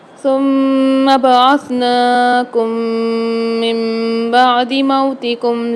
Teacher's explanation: اچھا، ثم میں یہاں پر زیادہ تر اسٹوڈنٹ کرتے ہیں کہ میم کو کھینچتے ہیں، کھینچنا نہیں ہے، صرف غنہ کرنا ہے، ثم نہیں پڑھنا ہے اس کو، ثم اس طریقے سے پڑھیں گے۔ من بعدی میں نون ساکن کے بعد اقلاب والا قاعدہ ہو رہا ہے، یہاں پر غنہ کر کے پڑھیں گے۔ میم ساکن کے بعد دوسری میم مشدد بھی آ رہی ہے، یہاں پر بھی غنہ کر کے پڑھیں گے۔